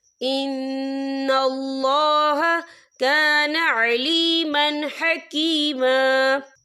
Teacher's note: تو ہم یہاں اظہار کریں گے، ہم اسے بنا غننے کے پڑھیں گے. کیسے؟